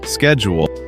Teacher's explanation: In American English, we usually say schedule with a sk [music] sound at the beginning. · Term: sk sound